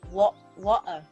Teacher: In England, they have certain accents in England that have a glottal stop,